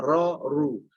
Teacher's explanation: Jadi ayat-ayat goribah tentang misalnya ketebalan huruf ro, tipisnya huruf ro. Pas tebal ketika fathah dhammah